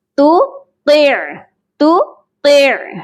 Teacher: پہلے والے تا کو جو کہ ڈاٹس والا ہے اس کو ہم باریک پڑھیں گے، اور دوسرے طا کو موٹا کریں گے، اور عین ساکن کے ساتھ اس کو ملا کر پڑھیں گے۔